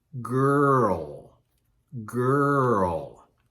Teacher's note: that L sound is not produced by touching the roof of our mouth. In fact, the tongue goes down